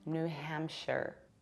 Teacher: If it is a separate word, then yes, we say a shire. But when it's a part of something bigger, you have to reduce it and pronounce it like share. Hence, we have New Hampshire.